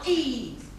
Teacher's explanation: So we call it spread also. So we can describe the vowel E, the long vowel E, as what? As close, front, and spread.